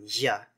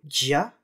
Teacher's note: Instead of a normal /j/ sound, spanish has the sound [ʝ], which is allophonically [ɟʝ]